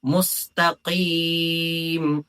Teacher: കാഫിന്റെ മഹറജ് എന്ന് പറയുന്നത് നാവിന്റെ അങ്ങേ അറ്റം മേലെ അണ്ണാക്കട്ടിൽ മുട്ടിക്കുമ്പോഴാണ് കാഫ് പുറപ്പെടുന്നത് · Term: ഖാഫ്